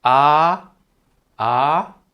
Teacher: So the first tone is flat: ā. You just hold the note flat